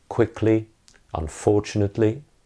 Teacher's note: Final li, the suffix that very often makes an adjective into an adverbial. Li is normally unstressed at the end of a word. Things like quickly, unfortunately.